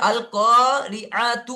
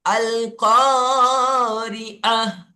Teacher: গোলটাকে ওয়াকফু করার সময় গোলটাকে হা করে, হাতে রূপান্তরিত করে সাকিন করে ধরে পড়তে হবে। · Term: হা সাকিন